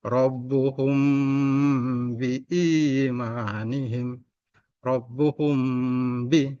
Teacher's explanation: ada huruf mim bertemu huruf ba, maka dibaca dengan dengung. Disebut dengan ikhfa syafawi.